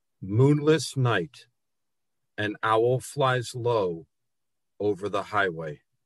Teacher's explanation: The long O sounds in moon, owl, low, and over really draw out this poem and echo against each other. The liquid L sounds in moonless, owl, flies, and low serve to soften the poem too. In fact, there is only one hard plosive sound in the entire piece, the T in night.